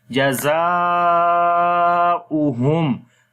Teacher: On the alif madda you can see mad sign, and after the madda letter the next is hamza in the same word. So this is madde muttasil. We long 3 to 5 seconds